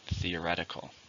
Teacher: How many syllables are in the word theoretical? 5. Stress on the second.